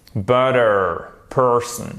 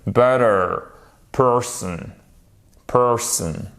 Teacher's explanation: même si on a notre accent tonique sur la première syllabe, on a toujours le R.